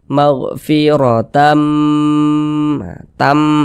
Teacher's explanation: Kemudian didengungkan. Jadi suaranya itu kita tahan, kita panjangkan sejenak. Maghfiratam, tam, kita tahan, kita panjangkan, kita dengungkan. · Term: gunnah